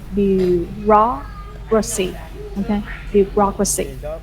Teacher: You put the stress on the second syllable, say bureaucracy